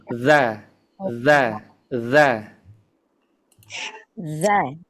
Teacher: Sudah benar makhrajnya dari ujung lidah ke ujung gigi seri atas. Nah, yang Ana minta untuk disempurnakan itu suaranya kita dorongkan.